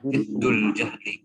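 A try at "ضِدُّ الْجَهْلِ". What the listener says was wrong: Bukan diddun ya, diddu. Jangan dikanduin. Diddul jahli. Ini sama ya, ini diddul jahli ini idhofah ya.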